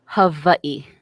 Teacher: the W's are V's because we don't have V's in the Hawaiian language